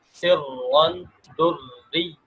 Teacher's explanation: یہاں پر دریون کا را باریک ہو رہا ہے